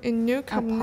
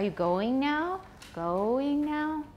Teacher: continuation rise is different from a question rise, a yes-no question rise